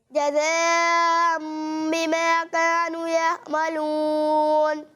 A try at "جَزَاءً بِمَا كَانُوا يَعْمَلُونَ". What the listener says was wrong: ماشاءاللہ بہت اچھی کوشش کی آپ نے، لیکن بیٹا یہاں زا لکھا ہوا ہے، ٹھیک ہے، تو اس میں سیٹی کی آواز واضح طور پر آنی چاہیے، یہ زال کے ساتھ ملنا نہیں چاہیے، ٹھیک ہے، اس